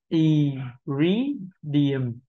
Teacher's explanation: Chúng ta thấy âm tiết số 2 là âm được nhấn trọng âm, và chúng ta đọc là rí · Âm đầu tiên là âm không nhấn trọng âm, mình đọc là y.